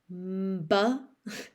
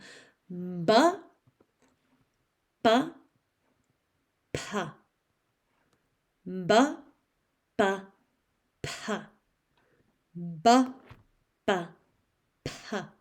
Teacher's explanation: ba, it almost sounds like I'm saying a nasal before it